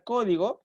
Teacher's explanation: ortográfico es el acento llamado tilde por ejemplo la palabra código nosotros vemos que la sílaba tónica es co y que se le ha puesto una pequeña rayita oblicua un